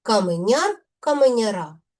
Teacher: В називному відмінку наголос падає на суфікс яр.